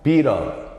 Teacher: 그러면은 트 사운드가 요 플랩 R로 변했어요. 이렇게 표시하죠. 그럼 어떤 현상이야? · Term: 플래핑